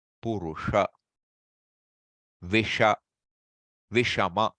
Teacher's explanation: There's an extra rolling in the tongue to get that sha. Your tongue has to roll in. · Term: cerebral